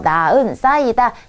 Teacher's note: 히읗이 원래대로라면 이응 자리에 가서 연음이 돼야 하지만 연음 없이 히읗이 빠져버리는 경우가 히읗 탈락입니다